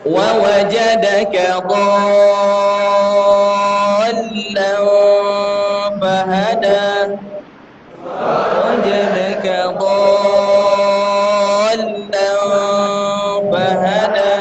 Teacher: La dha panjangkan dulu baru ditekan suara lam, tidak boleh ditahan. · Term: mad lazim